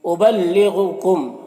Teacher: غین حروف مستعلیہ میں سے ہے، غین کو پر پڑھیں گے۔ میم میں اظہار شفوی ہو رہا ہے، اسے جلد پڑھنا ہے۔